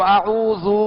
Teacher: تو اب مخرج کے تحت ان حروف کو ادا کرنے کی کوشش کیجئے، اور حرکات کو بھی دراز نہ ہو، بغیر کھینچے، بغیر جھٹکا دیے معروف پڑھیں گے. جیسے اعوذ، ذال پر پیش ہے تو اعوذ، دراز نہ ہو، کھینچے نہیں، اور ذال کو نرمی کے ساتھ ادا کرنا ہے جیسے ہم نے مشق کی.